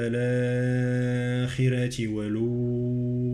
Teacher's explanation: الآخرة والأولى 4 حركات في المدين، الآخرة مد بدل، والأولى 4 حركات.